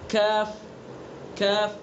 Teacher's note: کاف، زبان کی جڑ سے کچھ اوپر کا حصہ اور اس کے مقابل اوپر کا تالو. دیکھیں تھوڑا سا قاف کو ادا کرنے کے لیے زبان کی جڑ کو اس کے مقابل اوپر کے تالو پر لگائیں گے، اور کاف کو ادا کرنے کے لیے تھوڑا سا آگے کو آ جائیں گے، اوپر کو آ جائیں گے تھوڑا سا.